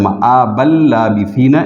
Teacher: نون تنوین جو ہے یہ لام سے بدل جاتا ہے اور لام کا لام میں ادغام ہو جاتا ہے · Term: ادغام بلا غنہ